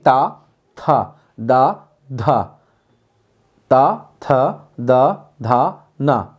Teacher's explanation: ते दे और न में बहुत कम वायु आती है दूसरे और चौथे वर्ण के मुकाबले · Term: अल्पप्राण